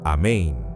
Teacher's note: Con el énfasis en la segunda sílaba. Y la N final [música] debe resonar dentro de tu cavidad nasal.